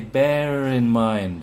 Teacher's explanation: but Er, ends in a schwa. You may add in this little r if you say bear in mind.